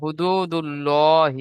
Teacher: আল্লাহ নামের আগে পেশ সেই জন্য পুরগুলো পড়তে হবে। ইজরা করেন। হায়ের উপরে পেশ আছে, পেশকে হারাকাত বলে, হারাকাতকে টান দেয়া নিষেধ।